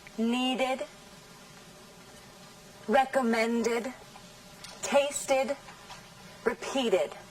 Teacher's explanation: Observan también que ed no se pronuncia de forma acentuada. El acento está en la sílaba anterior a ed